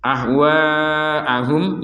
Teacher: jadi mim yang pertama dimasukkan kepada mim yang kedua sehingga terbaca dengan dengungan sekali lagi terbaca dengan dengungan jangan sampai dibaca terpisah kalau dibaca